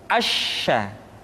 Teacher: Sya dikeluarkan dengan cara mengangkat tengah lidah kita ke langit-langit. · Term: huruf sya